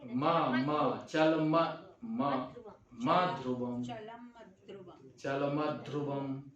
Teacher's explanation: तो चलम है तो म में अ आ गया तो चल म हो गया, लेकिन म जो होगा उसका उच्चारण तो ये ह्रस्व है कि अ है इसमें, लेकिन उच्चारण यहाँ दीर्घ की तरह होगा। तो दीर्घ की तरह मतलब उसमें स्ट्रेस होगा, स्ट्रेस ज्यादा करना।